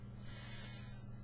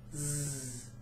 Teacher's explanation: the mouth position is the same, but for the S, you don't use your voice, you just blow air. S. And for the Z, you use your voice.